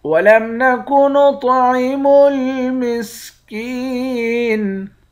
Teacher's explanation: کاف کو یا کے ساتھ ملا کر یا کو ایک الف کے مقدار کھینچیں گے، یا حروف مدہ ہے، آخر میں نون ساکن ہے۔ · طا کو موٹا پڑھیں گے، طا پہ قلقلہ بھی کریں گے۔ طا موٹا بھی ہے اور قلقلے والے حرف میں سے بھی ہے۔